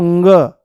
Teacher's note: वायु जो है वो मुंह से नाम मात्र के लिए बाहर निकलेगी पर नाक से ज्यादा निकलने की कोशिश करेगी